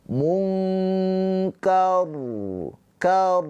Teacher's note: Rnya ini sukun ya karena berhenti ya sukun dan ro sukunnya ini dibaca dengan tafkhim tebal karena sebelum ro sukunnya ini berharakat fathah maka r-nya ini dibaca dengan tafkhim tebal dan ro mempunyai sifat tawassud ya ada sifat tawassud maka dia ada aliran suaranya sedikit munkar kar tuh ya jangan jangan langsung langsung terputus.